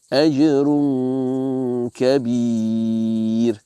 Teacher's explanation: So it's a half merger. So you prepare your mouth as if you're going to pronounce the letter kaf, but then you read through the tanween with ghunnah.